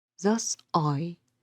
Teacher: capitalized them to highlight that they are stressed thus i here the stress is on i so it's unstressed stressed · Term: iambic foot